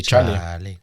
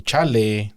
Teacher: the accent is still on the cha, so you can't change the accent. You can't change the emphasis on the word.